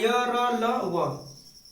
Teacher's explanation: जीभ, तालु, दंत और ओष्ठ का स्पर्श तो होता है, लेकिन यह पूर्णतः स्पर्श नहीं करते हैं, इसीलिए इन्हें हम क्या कहते हैं, अंतस्थ व्यंजन कहते हैं।